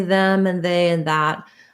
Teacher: my tongue doesn't really have to stick out of my mouth when I say them and they and that. It does need to rest between my teeth so that the sound can flow. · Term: TH sound